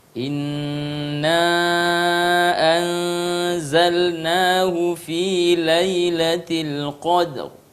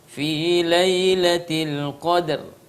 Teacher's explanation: Nah, itu ra dibaca dengan tebal. Bukan sekedar fi lailatul qadr.